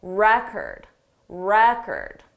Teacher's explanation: For the noun, the syllable stress is on the first syllable,